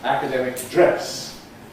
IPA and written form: ˈækədemɪk ˈdres (academic dress)